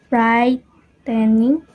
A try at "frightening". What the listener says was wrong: He also said brightening instead of frightening.